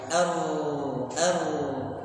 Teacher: Makanya pada huruf ra kan ada sifat takrir. Takrir ini getaran ya.